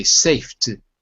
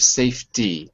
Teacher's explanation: sometimes you drop the ending you say safet instead of safety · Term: dropped endings